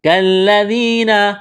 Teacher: لام میں سختی کریں گے، یا مدہ ہے، ایک الف کے برابر کھینچنا ہے، ذال کو باریک کرنا ہے، نرم کرنا ہے